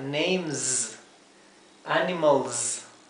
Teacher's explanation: no es la s suave sino que es la s eh Como de un zumbido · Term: s final